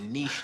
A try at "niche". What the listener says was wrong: no it's niche the C is silent